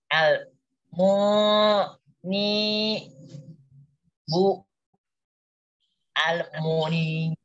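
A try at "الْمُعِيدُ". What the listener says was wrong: Ya, yang saya yang menjadi tidak mau berpindah kepada selanjutnya itu kamu menyebutkan bu apa macam-macam gitu loh. Karena di situ enggak ada huruf ba, da di situ kok.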